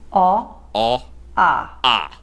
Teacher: A a a a The changes are super subtle, but from the neutral position, they progressively get slightly wider. So a is what a standard neutral accent is.